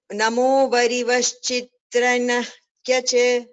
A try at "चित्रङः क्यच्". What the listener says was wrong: It is not chitrang kyach, chitrangah kyach. There is a visarga followed by kakara.